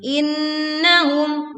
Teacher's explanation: nun bertasydid dibaca dengung yang sempurna.